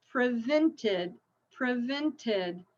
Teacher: actually there's two in this one it's a bonus so prevent it ends with a T so we have to add that other syllable